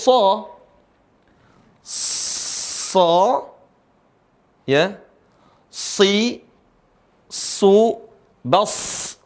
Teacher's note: Huruf so dibaca tebal.